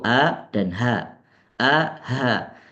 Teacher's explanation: yang termasuk ke dalam aqsal halqi tenggorokan paling dasar ada dua huruf yaitu a dan Ha a ha dia dekat-dekat di dekat diafragma jadi paling mendasar sekali